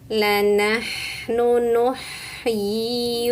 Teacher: Ha tenggorokan tengah. Alirkan bunyinya.